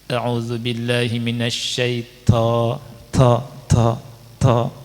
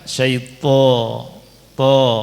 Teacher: Kemudian ada to ini sama dengan ta tapi nggak ada hamasnya. Makanya ketika orang ngaji menghamaskan huruf to, dia makhrajnya benar, tapi sifatnya belum benar.